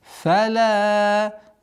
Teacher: Долгота в размере 4 огласовок. Мы тянем фатха.